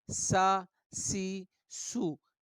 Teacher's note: तीनों में एक सिटी की आवाज़ पाई जाती है